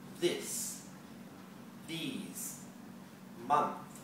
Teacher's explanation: that th sound is just made with the tongue moving back and blowing slightly across it